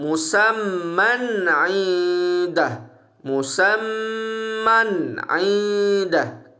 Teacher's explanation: hukum izhar halki kita tidak boleh dengung sedikit pun. Bacaan kita mesti jelas nun mati di situ.